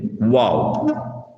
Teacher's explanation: இரு உதடுகளும் இணைந்து வட்டமாகி உச்சரிக்கும் போது வெளியாகும் எழுத்து தான் வாவ். நான் உச்சரிக்கும் பொழுது எங்களுடைய 2 உதடுகளும் இணைந்து வட்டமாகி உச்சரிக்க வேண்டும், வாவ்.